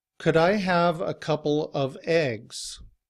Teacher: And in this sentence, the word begins with E, and we do not drop the V sound when the following word begins with a vowel